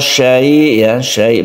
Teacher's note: banyak orang yang membaca syai ini dipendekkan padahal ini adalah panjang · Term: Mad alid lukun